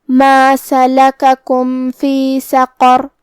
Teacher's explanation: کلمت سقر قاف کی ادائیگی زبان کے جڑ اور تالو کے نرم حصے سے ہے. قاف حروف التفخیم میں سے بھی ہے تو ہم یہ حرف کو بھاری آواز میں پڑھیں گے. آخری میں حرف را پہ رکیں گے تو اس پہ جزم سے رکیں گے، لہذا ہمیں را کو موٹی آواز میں پڑھنا ہے.